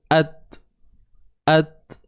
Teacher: pada huruf ta ni dia ada sifat syiddah. Okey? Dia ada sifat syiddah. Syiddah ni maksudnya suara tertahan.